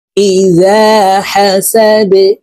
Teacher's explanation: এই ডাল কলকলার হরফ নিচের দিকে ধাবিত করে ধাক্কা দিয়ে উচ্চারণ করে এই ডালকে সাকিন করে ফেলবো